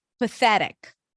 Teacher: Pathe, voiceless TH. And then we have a flap T, a schwa, and a k sound.